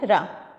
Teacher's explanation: लुंठित व्यंजन जिसके उच्चारण में जीभ तालु से लुढ़क कर स्पर्श करे